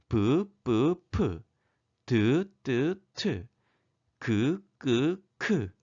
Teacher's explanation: 발음기관이 닿았다가 터지면서 나는 소리가 바로 파열음입니다. 그리고 소리의 세기에 따라 예사소리, 된소리, 거센소리 이렇게 3중 체계로 되어 있는 것을 여러분들 확인할 수 있을 겁니다.